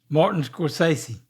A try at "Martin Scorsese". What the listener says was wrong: Scorsese is how I say it with more of a Z sound. Scorsese.